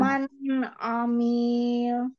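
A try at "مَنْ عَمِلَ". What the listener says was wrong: Panjang pendeknya diperhatikan. Mil panjang. Dialirkan lamnya ya. Dialirkan lam. Man amil.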